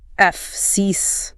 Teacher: It requires a quick push of air for the F, so just F-S, and then you slide immediately into a long, smiling E sound. And then you have to stick the landing.